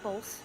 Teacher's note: She throws an L in there.